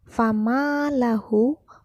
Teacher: ma itu terdapat mad asli, dipanjangkan 2 harkat jika membaca